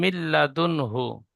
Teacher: নুন সাকিনের পরে ইয়ার মালুনের 6টি অক্ষরের মধ্যে লাম এসেছে, তাই নুন সাকিনকে বিনা গুণায় মিলিয়ে পড়তে হয়। একে ইদগামে তাম বলে।